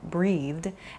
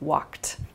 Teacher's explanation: a soft D sound like breathed, and then a more hard T sound like walked